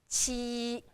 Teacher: There is the kind of air goes through your teeth, and it's first tone, flat.